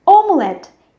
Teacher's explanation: We have omelette, omelette. Here we also have the stress which falls on the last syllable, and in English it will be on the first syllable.